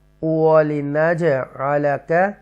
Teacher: یہاں حروف کلکلا جیم ہے اس لیے نج ایکو ساؤنڈ کے ساتھ ہم اس کو پڑھیں گے جنبش کے ساتھ